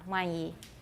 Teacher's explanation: N is gone. Nasalized vowel straight into the E sound.